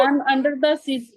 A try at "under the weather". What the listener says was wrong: under the weather, dear, not sea. Under the weather.